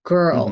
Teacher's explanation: we go from the G sound into the r vowel so we're going straight into ir